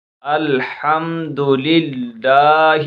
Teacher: میم ساکن کے بعد دال آ رہا ہے تو اس وجہ سے یہاں اظہار شفوی ہو رہا ہے، یہاں غنہ نہیں کریں گے۔